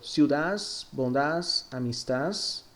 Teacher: la D final, que puede sonar como S, algo típico de Madrid